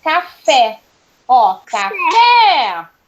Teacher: Então, a última sílaba é mais forte, ela é a sílaba tônica, portanto, ela é oxítona